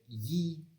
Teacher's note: the tongue is higher it's raised to the palate uh so it's a palatal fricative whereas in english it's a palatal approximant um you can look